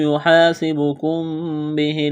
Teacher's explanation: میم ساکن کے بعد با ہے، یہاں پر اقلاب کریں گے، آواز ناک میں چھپائیں گے